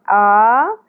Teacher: حمزہ کے اوپر کھڑی زبر ہے، ایک الف کے برابر کھینچنا ہے۔